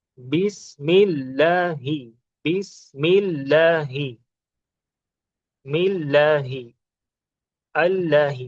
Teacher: Light तब होता है जब प्रीसीडिंग लेटर पे आपका जेर हो, कसरा हो।